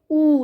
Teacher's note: आपने महसूस किया होगा कि आपके होठ जो है वो गोल हो गए हैं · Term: वृत्तमुखी